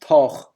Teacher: the broad TH, when at the end of a syllable became CH